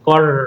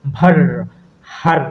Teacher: জিভ একাধিকবার এবং খুবই দ্রুত, অতি দ্রুত বারবার দন্তমূলকে স্পর্শ করবে বা দন্তমূলের সাথে আঘাত করবে বা দন্তমূলের সাথে কানেকশন হবে। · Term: কম্পিত ব্যঞ্জন